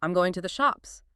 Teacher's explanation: Australians sometimes use uptalk. They might say, "I'm going to the shops." With that upward inflection.